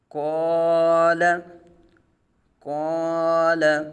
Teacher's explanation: الف سے پہلے پر حرف الف پر اور لام باریک پڑھا جائے گا · قاف حروف مستعلیہ میں سے ہے، آگے الف ہے تو الف سے پہلے حرف مستعلیہ پر حرف ہے تو الف کو پر پڑھا جائے گا